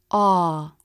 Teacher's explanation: To make this vowel, the jaw drops and the tongue shifts back. The tip of the tongue doesn't touch anything. The lips flare a bit. Ah. One technique that might help you make this sound is to think of the cheeks coming in and shifting forward just a little bit. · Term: all as in law vowel, aw as in law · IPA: ɔ: